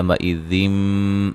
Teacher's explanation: يُنَبَّأُ نون ساکن کا باریک اخفا ہے، سا مد اصلی ہے، یو وولین ہے، مئذم یہاں نون تنوین کا اقلاب ہے، ٹھیک ہے. غنے کے ساتھ نون کو میم سے بدل کے پڑھیں گے